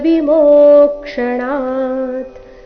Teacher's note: ಮೋ ದೀರ್ಘ ಬಂದು ನಂತರ ಆಘಾತ